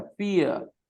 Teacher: देखो ई से शुरू करते हो ना और अ पे खत्म करते हो बेटा. फियर. ये हल्का सा अ आवाज आती है इस सिंबल से. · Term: diphthongs